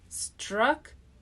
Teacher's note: This is a 2-syllable word with first syllable stress. Structure. We start with an S.